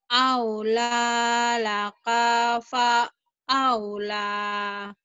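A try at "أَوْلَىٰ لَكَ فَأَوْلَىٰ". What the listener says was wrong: Kanya pendek. Aula. Aula laka fa aula.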